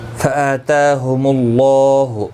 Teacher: اللہ کا لام پیش کی وجہ سے پر پڑا جائے گا